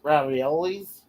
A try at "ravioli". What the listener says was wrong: No, there's no S at the end of ravioli. always been pronounced ravioli because it's a pasta dish.